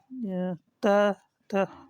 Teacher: त वर्ग जो होता है दंत में आता है